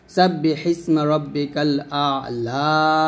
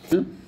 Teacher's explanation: ওয়াকফের সময় জবরের পরে খালি ইয়া থাকলে সে জবরকে খাড়া জবর দ্বারা পরিবর্তন করে অর্থাৎ 1 আলিফ টেনে পড়তে হবে